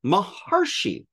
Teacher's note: Haha, the rishi there, that ri becomes an AR